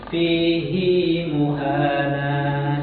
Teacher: di kalimat ini fihi muana dibaca panjang dua harakat ya